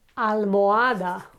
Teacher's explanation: we do not pronounce the H. Okay, almohada, the pillow, and there is no h sound in it.